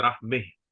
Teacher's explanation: اگر آپ رک رہے ہیں تب آپ بولیں گے رحمہ، یعنی فتح کو آپ یعنی فتح کو آپ فتح اور کسرہ کے بیچ میں پڑھیں گے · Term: امالہ